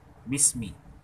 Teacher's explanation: seperti bismi itu bi, kemudian sukun, kemudian mi, itu diusahakan 1 harakat